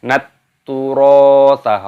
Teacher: taknya berharokat tasdid, ini dimasukkan, diidghamkan. Nat turotha, roknya panjangkan, ada tanda alifnya.